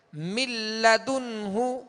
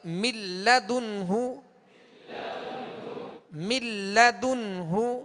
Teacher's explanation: نون کو لام میں ہم نے داخل کر دیا, نون کو لام سے ملا دیا, اب یہاں غنہ نہیں کریں گے. من لدنہ, اس کو من لا یا من لا نہیں پڑھیں گے بلکہ من لدنہ, من لدنہ. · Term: ادغام بلا غنہ